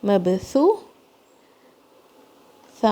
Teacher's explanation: مبثو، ثا زبان کی نوک سے، مبثو ثا اور واو 2 کاؤنٹ، مبثوثہ ثا کی آواز اگین زبان کی نوک سے